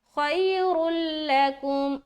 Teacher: यहां पर र को लाम से मिला रहे हैं यानी कि इदगाम कर रहे हैं लेकिन गुना नहीं करना · र को मोटा करते हुए मिलाएंगे